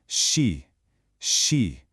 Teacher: It's just the sound of the air hissing out slowly, continuously, a soft sound. So, she isn't a burst at all. · A soft sound. So she isn't a burst at all. It's a smooth, soft, gentle release of air. You keep your tongue fixed and you just let that air flow.